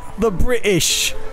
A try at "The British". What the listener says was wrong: You pronounce the T too hard.